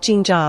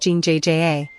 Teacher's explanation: The double is a tense, unaspirated J sound. It's not ging jaw, but a sharper, more clipped ging jja.